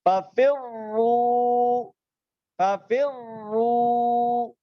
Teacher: تو قانون کے مطابق رائے مشدد میں دوسری را پر ہو رہی ہے تو پہلی را کو بھی ہم پر پڑھیں گے